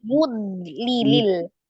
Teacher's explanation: tampakkan sifat istitola memanjang, jadi seperti terjeda. Yud, padahal kita tahan ya, yud lilil.